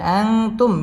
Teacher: মিম সাকিনে ইজহারে খাস গুন্না ছাড়া পড়তে হবে।